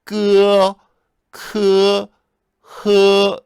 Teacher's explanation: 설근음, 혀뿌리에서 나는 소리예요. 약간 가래 끓는 소리를 읽어주면 돼요.